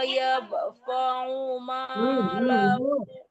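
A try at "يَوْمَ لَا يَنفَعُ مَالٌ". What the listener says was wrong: Bukan yap, tapi nun yang mati ya, didengungkan, disamarkan ke fa. Yauma la yanfa'u membaca yang itu ditekan ujung gigi atas ke bibir bawah, ke perut bibir ya. Yauma la yanfa'u malun wala banun.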